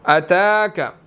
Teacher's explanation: تا کے اوپر کھڑی زبر ہے، 1 سیکنڈ اس کو لمبا کریں گے